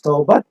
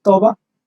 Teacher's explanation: If you pronounce the final T, then it becomes Tobat, but we don't say it as Tobat, we say it as Toba. That T is not pronounced.